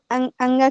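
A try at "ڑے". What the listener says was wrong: है, इसे अड़े पढ़े, इसे अंगा पढ़ दिया तो गलत हो जाएगा। अंगा ये वाला होता है, ये अड़ा होता है, अड़ा पढ़ेंगे आप इसको।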